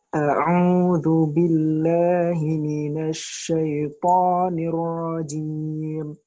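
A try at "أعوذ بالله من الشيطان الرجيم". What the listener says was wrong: Saat paling tebal. Minasyaiton. Tebelin, saat. Jadi tebel, nggak usah dihentak, saat. Minasyaiton. Kan nggak usah di Nah. Minasyaitonir rajim. Huruf O-nya antum gimana? Huruf O-nya antum seberapa? Nggak bisa lebih tebal lagi. Nah, ukurannya segitu. Minasyaitonir rajim.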